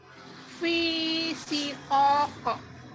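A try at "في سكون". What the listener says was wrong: Aduh, pendek banget. Ini mat arid disukun ya. Lebih panjang kok gitu. Ayo, 4 harokat.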